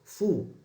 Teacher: Ketika mengucapkan huruf fu dengan lembut, bibir atas dan bawah berperan. Kemudian tidak ada getaran di tenggorokan.